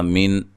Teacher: نون ساکن کو ہلانا نہیں ہے، اور نون ساکن کا یہاں اظہار ہے، غنہ نہیں کریں گے